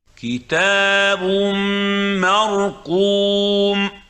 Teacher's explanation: This is idgham bi ghunna. You merge the tanween into the meme and you hold the ghunna for no more and no less than 2 counts.